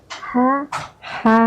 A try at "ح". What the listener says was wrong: Kurang tipis yang haknya yang di tengah. Jadi kalau H itu, H yang besar itu seperti biasa aja kayak ngomong hari. Hari Senin, hari Selasa, hari Rabu tuh sama tuh H.